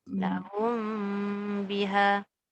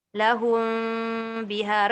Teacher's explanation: Janji dia melekat bibir atas dengan bibir bawah. Cuma dia tidak ditekan dengan kuat. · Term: ikhfa syafawi